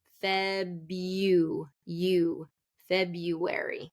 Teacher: so no R in this and we want to do invisible y